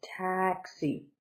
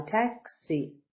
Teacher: Stress is on the first. Taxi. So up high, taxi.